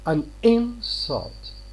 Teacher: If you say an insult, look, I am stressing the first syllable here. It is a noun.